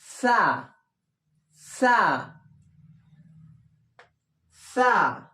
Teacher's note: ছয়াকার ছা নয়, সা। সা উচ্চারণ হবে, জিহ্বাটা ওপর দাঁতের সঙ্গে লাগিয়ে হালকা জিহ্বা বের হবে এরকম।